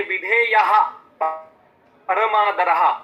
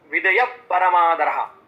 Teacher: ज्या वेळेला क ख याच्या आधी विसर्ग असतो म्हणजे विसर्गाच्या नंतर क किंवा ख असतो तेव्हा त्याला उपध्मानीय असं म्हणतात आणि त्या विसर्गाचा उच्चार अर्धा करायचा असतो